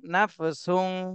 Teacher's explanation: এখানে তানবিনের পরে ইকফার হরফ শিন এসেছে, এজন্য এই তানবিনে ইকফা গুণা করতে হবে অনস্বরের মতন।